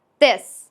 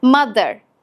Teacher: İse dilinizi üst tarafa koyduğunuzda çıkan daha sesli ve titreşen bir sestir. Öncelikle dilini üst dişlerinin arasına koy ve şu sesi çıkar.